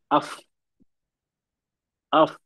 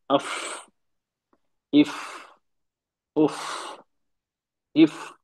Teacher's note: ऊपर के दो दांत और नीचे के लिप का गीला हिस्सा